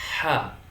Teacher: Yang kedua, ha. Ada nafas yang mengalir ketika kita mengucapkan ha. Berhembus nafasnya, maka ha huruf yang memiliki sifat hamas.